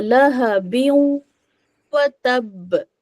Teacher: پھر اب دیکھیں فورتھ ایگزامپل، لہبن ہے اور اس کے بعد میں واو ہے، ٹھیک ہے، واو بھی تو ایک لیٹر ہے نا ادغام بغنہ والا، تو لہبیوں وتب، ٹھیک ہے، بن کا بن نہیں پڑھا میں نے، بیوں کر دیا، ٹھیک ہے، واو کو ملا دیا اس میں اور غنہ بھی کیا